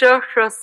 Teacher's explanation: Sha, the first one is the Talavya, then it's a Murdha sound and then it's a Dantya sound. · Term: places of pronunciation